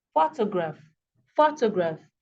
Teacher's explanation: this word has three syllables here photograph okay but the first syllable is um emphasized more than the others